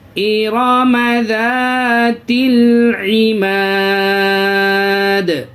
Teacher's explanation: یا الف مدہ، الف مدہ کی پہچان یہ ہے کہ الف سے پہلے زبر، جہاں پہ بھی الف سے پہلے زبر آئے آپ کو یہ سمجھنا ہوگا کہ یہ الف مدہ ہے، الف مدہ کو تھوڑا کھینچتے ہیں · یہ وقف کی حالت میں یہاں پہ سکون آئے گا، اس کی وجہ سے یہ دال میں قلقلہ کر دیں گے